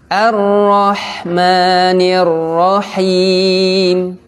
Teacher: huruf H ini berada di tengah tenggorokan